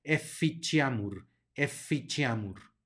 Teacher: digny luego tenemos una doble es F que hay que enfatizar tenemos una c seguida de una I que va a sonar como Che por lo tanto esta palabra se pronuncia eficiamur eficheamur luego tenemos